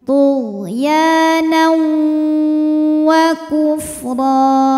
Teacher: hukum idgham bhunah karena ada tanwin fathah menghadapi huruf wau maka tanwin lebur ke wau disertai dengung